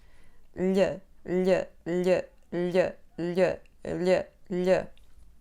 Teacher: Quando pronunciamos o som Lh, tocamos o céu da boca com o dorso da língua. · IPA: ʎ